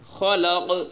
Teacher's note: آگے من شر ما خلق، من پہ غنہ، خلق خا موٹی، قاف بھی موٹی